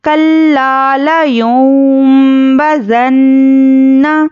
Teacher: تو زال کو نرمی سے پڑھیے اور نون مشددہ میں غنہ اچھے سے کریے